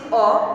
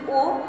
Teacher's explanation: আমি একবার বলছি অ, এখানে আমার মুখ বেশি ফাঁকা থাকছে, এবং আমি যদি ও, তাহলে আমার মুখ সংকুচিত হয়ে যাচ্ছে। তাই অ এর যদি অ এর মতো উচ্চারণ থাকে তবে সেটা স্বাভাবিক উচ্চারণ, মানে তার ঠিক উচ্চারণ বজায় রয়েছে, অর্থাৎ বিবৃত।